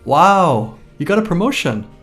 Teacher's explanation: excitement or surprise rising and falling intonation